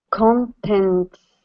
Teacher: you're going to pronounce a t then slide into the s contents